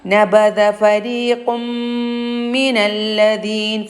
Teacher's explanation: ദാലാണ് നാവിൻ്റെ തലയുടെ ഭാഗത്തേക്ക് മേലെ മുൻപല്ലിൻ്റെ താഴെ അറ്റം തട്ടിയിട്ടാണ് ദാലുച്ചരിക്കുക